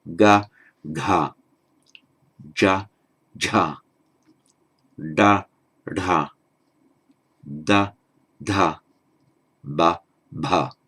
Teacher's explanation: That's how we normally do it in English. We find it more difficult to make these voiced consonants with the aspiration.